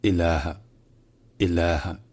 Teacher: le premier A est un A long.